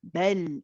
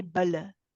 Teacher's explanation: It is a tawassut letter. It is not too long, not too short. Bel. We do not say bala.